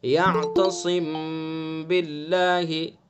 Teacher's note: میم ساکن کے بعد با آئے گا تو اخفا ہوگا، جیسے یعتصم باللہ۔ خیشوم سے غننے کے ساتھ پڑھیں گے، ایک الف کے برابر غنہ کریں گے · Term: اخفاء شفوی